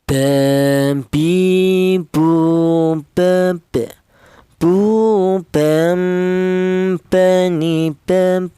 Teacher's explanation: berasal dari kedua bibir yang rapat ya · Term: huruf ba